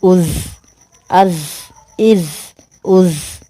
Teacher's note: یہ سختی والا حرف ہے، ٹھیک ہے، سیٹی آنی چاہیے یہاں پہ